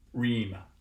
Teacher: generally a post-alveolar place of articulation with more kind of contact on the sides